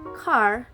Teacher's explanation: the k sound creates a sharp wave because it's a quick, strong burst of air. The vowel sounds r, like in father, produce a smoother, longer sound wave.